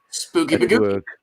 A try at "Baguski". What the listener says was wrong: it's actually pronounced Baguski. You have to imagine the C as an S.